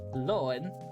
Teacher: Loin, because of the fact that it has two vowels right next to each other and they don't glide into each other, the infix is influenced by the first syllable lo.